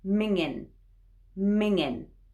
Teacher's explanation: that ng at the end that's hard to pronounce but actually we'll often drop that last g and finish on the n sound because it's very informal so we say mingin mingin that's easier